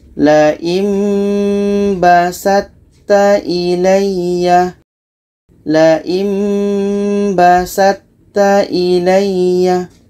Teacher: Nun mati bertemu ba hukumnya iklab. Apa maksudnya? Bunyi nun itu kita tukar kepada mim. Sebab itu di sini ada mim.